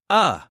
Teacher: that very weak, lazy sound we make in unstressed syllables, like the A in about or the E in student. It sounds like uh. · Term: schwa